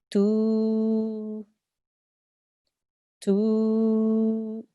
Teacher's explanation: This is a waw mad because this ta has a dhamma. We elongate the dhamma sound to 2 seconds. So in this example, it would be tu, tu.